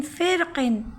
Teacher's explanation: فا را زیر فر، قاف 2 زیر قن، فرقن۔ فرق میں را باریک پڑھی جائے گی۔ فرق میں جو لفظ ہے فرق، اس میں ترقیق کریں گے، یعنی تفہیم بھی ہے اور ترقیق بھی ہے، دونوں جائز ہے، مگر ترقیق یعنی باریک پڑھنا زیادہ بہتر ہے۔